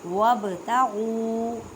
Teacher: با ساکن کلکلا کریں, کلکلا کا مطلب ہے ہلا کر پڑھنا